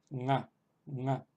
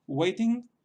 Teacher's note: se pronuncia con la parte posterior de la lengua sobre el velo del paladar. Entonces no es una N normal, tal como nosotros lo entendemos, sino que es una nga, nga. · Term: nasal